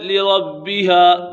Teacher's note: با حرف قلقلہ میں سے اور یہ با مشدد بھی ہے، اسے جمع کے ساتھ پڑھیں گے۔